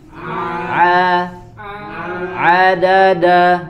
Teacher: huruf ain suaranya tidak masuk ke dalam hidung, ya, ke dalam hidung, karena huruf ain bukan huruf yang memiliki sifat khayshum, ya, tidak.